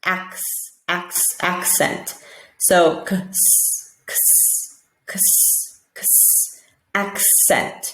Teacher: in the acc we're hearing a k s